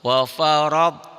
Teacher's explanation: ronya tebal. Karena barisnya di atas